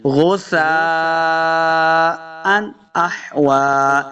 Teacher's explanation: سا کو بالکل نرمی کے ساتھ پڑھیں گے، سیٹی کی آواز نہیں آنی چاہیے